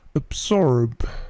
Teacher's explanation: Perhatikan bunyi B-nya itu memantul sedikit. Absorb. Bunyi B ini biasanya memantul jika dia berdiri sendiri.